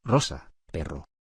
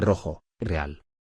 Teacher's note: Representa el sonido vibrante alveolar.